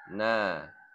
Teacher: Cara membaca na yaitu ujung lidah bertemu dengan gusi keras. Seperti kita menyebutkan huruf Nun dalam bahasa Indonesia.